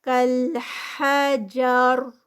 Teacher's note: را سے پہلے زبر ہے تو اس لیے یہ ہیوی پڑھی جائے گی، اینڈ پہ حجر ہیوی ہوگی